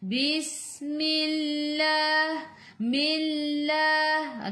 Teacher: Bis masuk dalam sin, sin ada sukun, sin sifat hurufnya safir, kena bunyikan macam bunyi belalang